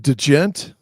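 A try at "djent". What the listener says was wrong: just gent. D is silent.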